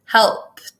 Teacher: the word helped is kind of a weird one because it has an ED at the end, but it's actually kind of a T sound if you think about it.